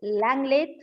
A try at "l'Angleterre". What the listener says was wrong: See, AN is pronounced as on. On. L'Angleterre.